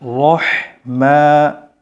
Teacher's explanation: মিম আলে এক আলিফ টান দিবেন